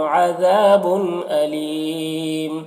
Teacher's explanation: وقفی کی صورت میں میم کی دو پیش کی تنوین سکون سے بدل جائے گا تو پھر مد عارض وقفی ہوگا. اور اس میں طول توسط قصر تینوں جائز ہوتا ہے.